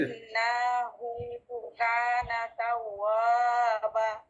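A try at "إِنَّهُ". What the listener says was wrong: ইন্না, নাটা লম্বা নাই, ইন্নাহু।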